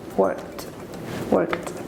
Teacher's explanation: You make the K sound and the D sound, but not the E sound.